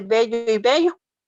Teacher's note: la diferencia que existe entre la b y la v al pronunciarla no se distingue